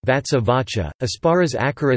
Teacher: the sibilant assimilates to the preceding sound as an aspirate (i.e., the sequences ts and ps become cch)